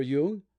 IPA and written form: ˈjʊŋ (Jung)